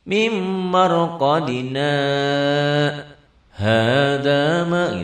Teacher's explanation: Ini ada sakta. Sakta itu diam sebentar tapi tidak ngambil napas.